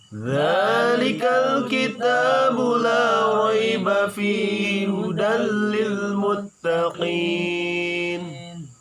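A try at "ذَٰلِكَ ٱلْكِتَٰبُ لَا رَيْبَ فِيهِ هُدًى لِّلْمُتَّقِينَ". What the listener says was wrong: Boleh membedakan antara kaf dengan kaf, muttaqin sedikit aja, jangan muttaqin ya. Muttaqin jangan. Muttaqin itu terlalu berlebihan. Muttaqin biasa aja, muttaqin ya. Ini membedakan antara qaf dengan kaf karena ketika berharkat kasrah dengan domah, si qaf itu seakan-akan mirip dengan kaf.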